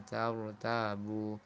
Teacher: ra dibaca tebal karena terletak setelah fathah